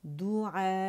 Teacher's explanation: اور کیونکہ ہم وقف کرنے جا رہے ہیں تو یہاں ہمارے پاس مد متصل واجب بن رہی ہے، تو وقف کی صورت میں ہم اسے لازمی 6 کاؤنٹ پہ کھینچیں گے اور پھر حمزہ ساکن کے ساتھ پڑھا جائے گا